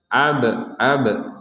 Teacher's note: ada ba sukun di sini harus kita pantulkan